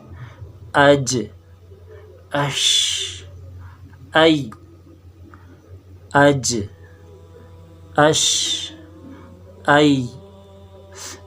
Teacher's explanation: اس مخرج سے تھوڑا سا آگے آ جائے زبان کی بیچ اوپر کے تالو سے لگے تو یہاں 3 حروف ہے